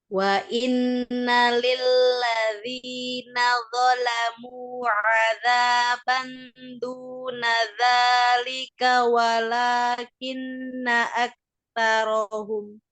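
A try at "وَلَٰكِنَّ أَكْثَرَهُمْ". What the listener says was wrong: Oke, dari walakinna kafnya masih kurang terdengar sukun apa hamsnya lagi.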